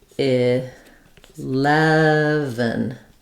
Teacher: very little vowel in that final syllable if anything's there it's a little uh or I sound short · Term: reduced vowel